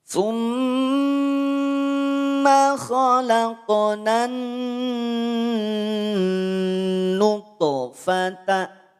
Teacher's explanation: Khalaqna, nunnya tak perlu kita panjangkan. Kenapa? Karena setelahnya ada alif lam syamsiyah.